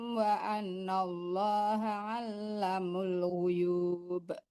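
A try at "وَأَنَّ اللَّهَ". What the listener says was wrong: Itu dua harakat. Si pendek. Allah itu dua harakat tuh Bu.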